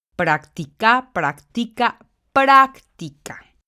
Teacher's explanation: la sílaba tónica igualmente está en la antepenúltima sílaba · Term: palabra esdrújula